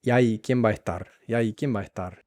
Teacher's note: es importante tanto para la pronunciación que se fundan esas tres palabras, que se unan, ¿no? Que se vuelvan como una sola frase, como una sola palabra.